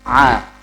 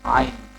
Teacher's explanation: Hamzah ditenggorokan paling bawah kalau Ain tenggorokan atasnya Ain atasnya Hamzah Aa Au audu [Musik] auzubillahiminasyaitanirrajim huruf syin itu